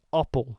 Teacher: the Dutch A is way further back in the mouth · In Dutch, it's appel, further back in the throat, whereas in English, it stops off in the middle.